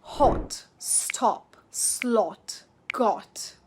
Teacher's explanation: A rounder sound than you're probably used to in words like hot, stop, slot, got. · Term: the short O